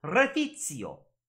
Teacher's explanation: The C, so the woman says it, Refizio. The C makes a T sound, almost like a TS.